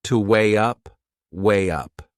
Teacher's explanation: we insert a little Y sound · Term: linking sound